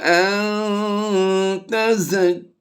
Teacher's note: نون ساکن کے بعد دیکھیے حروف اخفا میں سے تا ہے تو ہم نے یہاں پر اخفا کرنا ہے، یعنی آواز کو ناک میں چھپا کر ادا کرنا ہے